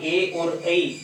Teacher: तो ए दे तो कंठ तालु है, ए दई तो कंठ तालु, अर्थात ए और ऐ इन दोनों का जो उच्चारण का स्थान है कंठ और तालु दोनों से ही होता है